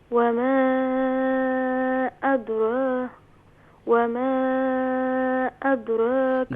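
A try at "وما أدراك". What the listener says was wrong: دال کو لائٹ کریں گے.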